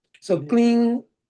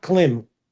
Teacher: because of Anuswar, the M sound is NG sound.